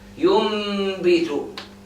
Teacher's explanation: Whenever you have the noon and after it ba, you are going to change the whole letter. The noon is going to change to meme. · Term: iqlab